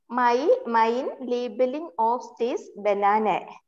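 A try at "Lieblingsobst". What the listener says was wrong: അവിടെ labelings എന്ന് ഒരു സാധനം ഉണ്ട്, എസ് കൂടെ ഉണ്ടെന്ന് ഓർക്കണേ. Labeling അല്ല labeling.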